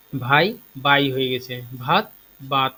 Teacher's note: সঘোষ মহাপ্রাণ বর্ণটা সঘোষ অল্প প্রাণ বর্ণে পরিণত হয়। মহাপ্রাণ বর্ণ তোমরা জানো হয়তো দ্বিতীয় এবং চতুর্থ বর্ণ, এবং অল্প প্রাণ বর্ণ প্রথম এবং তৃতীয় বর্ণ।